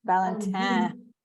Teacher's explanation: if you're saying it the French way you have to get that last syllable through the nose